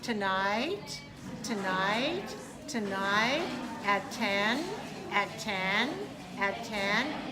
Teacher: I'm rising up on my pitch